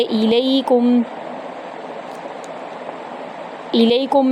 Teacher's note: غنہ کرتے ہوئے شد والے میم میں کاف کو داخل کرنا ہے اور موٹا نہیں کرنا ہے یہاں پر کاف کو